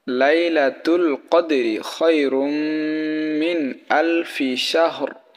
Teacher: তো তাহলে এখানে মিম আসছে, তানবিনের পরে মিম আসছে, সেই কারণে আমরা তানবিনকে বা মিমকে গুন্নাহ করব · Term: ঈদগামে বাগুন্নার